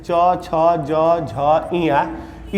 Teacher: च वर्ग जो होता है जैसे च छ ज झ ञ इसका स्थान कहां होता है तालु